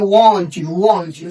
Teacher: when you go from T to Y there will be a gap because the articulation of these sounds are different. T comes from some other place while Y comes from some other place.